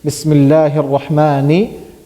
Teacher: Noon is pronounced from? The tip of the tongue.